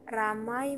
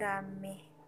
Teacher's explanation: Yang kelima, monoptongisasi adalah proses perubahan diptong menjadi monoftong